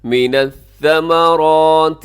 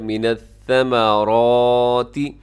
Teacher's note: کوشش کیجیے گا سیٹی نہ ہو سا کے اندر